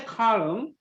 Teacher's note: l sound is there but very soft very soft